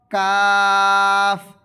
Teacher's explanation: জিহবার গোড়ায় একটি আলা জিহবা আছে ওই জিহবা থেকে আদায় হবে · আলা জিহবার অল্প সামনের দিক থেকে